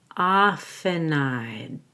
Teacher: I also link the in and often to I'd so it sounds like nide · I also link the N in often to I'd, so it sounds like nighed. Often I'd. I'm going to hold my breath and make a stop on the D.